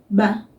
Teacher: It's almost just a little flutter of a touch of my lips together.